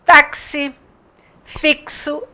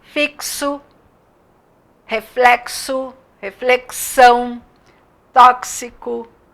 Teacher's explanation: fazer dois sons e aí nós temos a palavra táxi fixo esse X é pronunciado como se fosse um k e um S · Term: dífono